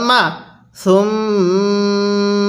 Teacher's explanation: এই মিমের মধ্যে আমরা গুন্নাহ করবো কারণ মিমে নুনে তাজদিদ গুন্নাহ করা ওয়াজিব